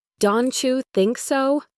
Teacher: Another common one is don't you, which often becomes donu. The t and the y combine to make a ch sound like in cheese.